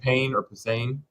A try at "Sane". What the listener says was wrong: I think it's just Sane. The P is silent. Silent.